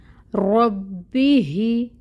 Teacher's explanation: ہا کو پھر اقصی الحلق سے ادا کریں گے، اور اس کے نیچے 1 حرکت ہے زیر کی، کسرہ، تو اس کو 1 کاؤنٹ ادا کریں گے۔ ربی ہی، اس ہا کو لام کے ساتھ جوائن کریں گے، لام کو ہلانا نہیں ہے، لام ساکن ہے تو یہاں پہ توسط ہوگا۔